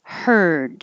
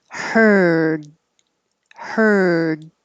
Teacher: so your tongue is in the r position like er you're making the noise of r but beginning with some airflow for the h her and then finishing with your tongue in the d position